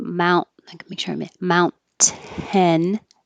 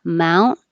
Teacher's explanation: you hold your tongue in the T position and you don't release the airflow so instead of saying Mount 10 with a t that releases